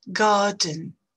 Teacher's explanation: vous voyez qu'on ne prononce pas le « re » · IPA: [ˈgɑːdn]